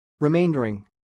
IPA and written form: riˈmeɪndərɪŋ (remaindering)